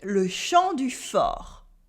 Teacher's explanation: In le champ du fort, you might have noticed that we have a silent P and a silent T.